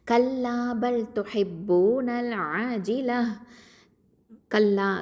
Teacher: கல்லா காஃப் ஃபதா லாம் ஷத்தா கல், லாம் ஃபதா அலிஃப் மத் லா. கல்லா காஃப் வந்து அகசல் லிசான் எழுத்து, கீழ் நாவு எழுத்து